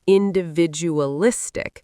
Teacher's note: Individualistic stresses the fourth syllable